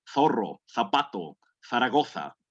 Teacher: la punta o un poquito más atrás de la lengua entonces la punta de su lengua sobresale un poquito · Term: la zeta